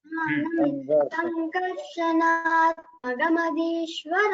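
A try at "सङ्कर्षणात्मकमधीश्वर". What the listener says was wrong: The kakara and all should not become gakara. Again, regional accent is coming. That's just a Tamil accent or Malayalam little that is showing there.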